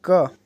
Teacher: क जो है कंठ व्यंजन है